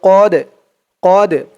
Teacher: এই দালটা হচ্ছে কলকলার হরফ ধাক্কা দিয়ে পড়তে হবে